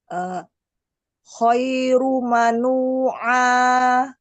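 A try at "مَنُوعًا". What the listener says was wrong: Nah, bagus. Masya Allah.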